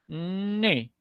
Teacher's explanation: la n era una consonante nasal Sonora y que se ubicaba en los alvéolos